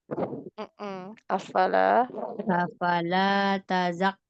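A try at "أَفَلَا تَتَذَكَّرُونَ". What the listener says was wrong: Huruf taknya ada 2.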